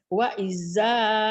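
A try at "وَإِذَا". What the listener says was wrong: Wahnya dari mana dapet? Wahnya tak ada Bu, tak ada wah, enggak apa-apa ya Bu.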